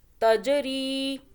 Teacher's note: جنات تجری، جیم پہ قلقلہ کیا، جیم قلقلہ کا حرف ہے، جھٹکے سے پڑھیں گے. تجری، را یا زیر ری تھوڑا کھینچا ایک الف کے برابر